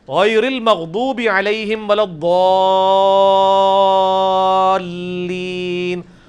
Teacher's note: ولضالین میں جو الف کے اوپر بڑی والی مد ہے وہ 5 الف تک کھینچی جاتی ہے, یعنی 10 حرکات کی لینتھ کے برابر.